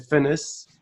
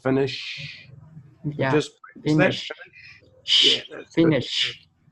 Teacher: when you said finish you had an S instead of an SH so you had finis oh you want finish finish finish it